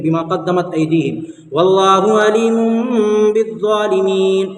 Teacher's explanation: तनवीन और नून साकिन, कायदा इसका है तनवीन और नून साकिन के बाद अगर बा आएगा तो ये जो छोटा सा मीम है इसको तनवीन से बदल कर पढ़ेंगे, तनवीन जो है अबदम हो जाएगा, ठीक है। नून को मीम से बदल कर और तनवीन को मीम से बदल कर गुन्ना और इक्फा के साथ पढ़ेंगे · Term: इक़लाब